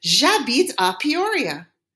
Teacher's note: I have to use a J apostrophe because the H is silent. That makes it a vowel sound and I need to blend them together.